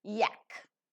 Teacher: palatal as the blade of the tongue goes very close to the hard palate region, and semivowel because it's a vowel glide but functioning as a consonantal sound linguistically speaking.